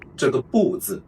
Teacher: I would still pronounce it as tone 4, 不, before a character in the tone 4